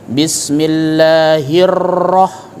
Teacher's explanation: ya, namanya takalluf, dipaksain, ya, memaksakan untuk supaya lidah kita itu memiliki getaran ketika membaca huruf ro-nya